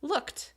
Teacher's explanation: your voice box doesn't vibrate for the end of that sound looked right so you're moving from one voiceless sound to another